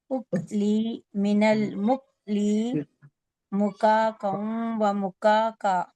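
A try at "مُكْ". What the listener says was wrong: आपका 2 जगह सही निकला, इक अक उक और मुक, इसमें हम्स नहीं हुआ। हाँ, लास्ट फोर्थ लाइन में फर्स्ट 2 में हम्स हुआ, नेक्स्ट 2 में हम्स नहीं हुआ, सीधा हुआ।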